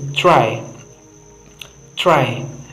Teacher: Try, because it is at the initial positions begins the word. We are able to have a period of silence and preparation for the closure of the tip of the tongue and alveolar.